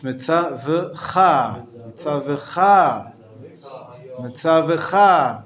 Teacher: The emphasis is not on the V, on the vav. The emphasis is on the last syllable.